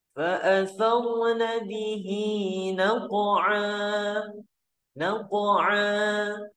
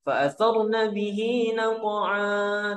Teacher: Mad iwad itu panjangnya nggak terlalu panjang, 2 harakat saja